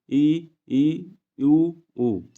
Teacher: जिन स्वरों के उच्चारण में मुख द्वार लगभग बंद रहता है